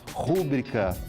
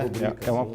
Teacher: as pessoas falam rúbrica proparoxítona, sendo que é rubrica, uma paroxítona também